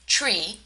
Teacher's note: She also has difficulty pronouncing the voiceless interdental fricative th in initial position, such as when she says 3, which sounds like tree, where she substitutes the th for the voiceless interdental stop t